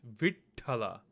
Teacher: You hear like a slight pause between the V and then the ta. And the reason why you hear the slight pause is because their two tas are combined together.